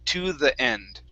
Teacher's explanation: it's really quick but the th is there instead of saying a d sound we say the to the